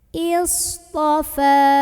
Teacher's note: ini shad punya ciri khas sifat, namanya sifat sofir, artinya suara desis